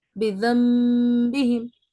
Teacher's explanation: نون ساکن کو میم ساکن پڑھنا ہے